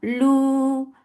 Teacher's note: Lu for the circle lips. And long vowel should not go into your nose. It is 2 counts long.